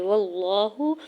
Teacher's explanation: لام جلالہ سے پہلے زبر ہے تو یہاں پہ اللہ کے نام کو پر پڑھیں گے اور کھڑی زبر ہے 2 حرکت کھینچ کے ادا کریں گے،